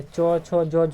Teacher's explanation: च वर्ग जितने भी है, च, छ, ज, झ, यहाँ, यह जो है तालु से बोला जाता है, इसीलिए इसे क्या कहा जाता है, तालव्य वर्ण कहा जाता है, ठीक है।